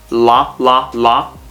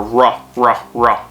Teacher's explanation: when you make an L sound, la, la, la, your tongue is at the top of your mouth. When you make an R sound, r, or ra, ra, ra, it's not technically touching the top of your mouth.